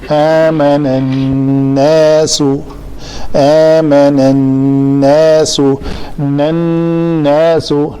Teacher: نون کے اوپر شد ہے تو اس کے اوپر غنہ کریں گے